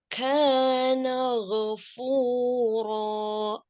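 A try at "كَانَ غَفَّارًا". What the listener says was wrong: Bukan ghafur. Coba dilihat lagi. Ghafara. Huruf kafnya nggak boleh hamsnya berlebihan. Ini jadi syiddahnya kurang.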